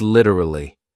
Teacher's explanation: he then uses a flap T which is also more common in North American